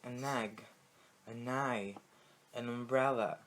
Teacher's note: toda vez que eu tô falando essas palavras, eu tô juntando o an com a próxima palavra